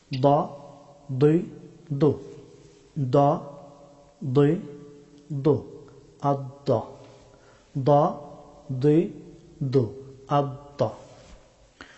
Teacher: জিহ্বার বাম অথবা ডান কিনারা, আদ্রাসে ওলিয়া, উপরের চর্বণ দন্তপাটির মূল, এইখান থেকে দদ হরফটি উচ্চারিত হয়।